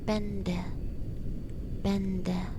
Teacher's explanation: And before D or T, I think, it sounds like N.